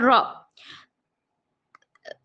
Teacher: را زبان کے سائڈ کے حصے کو لیفٹ اور رائٹ سائڈ کے داڑوں کو لگانے سے را ادا ہوتا ہے، را پر زبر ہے نہیں کھینچیں گے، را زبر را۔